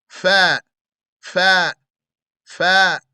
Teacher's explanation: Fa is a gentle, not stopping the sound, low letter of air expulsion, mouth expansion, and being on the edge.